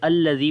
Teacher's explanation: لام کو باریک پڑھیں گے، زال کو نرم پڑھیں گے